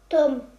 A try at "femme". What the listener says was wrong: Non, pas Tom. C'est pas un T.